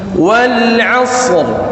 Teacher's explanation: Ini namanya waqful hurufain. Ada dua huruf yang dimatikan.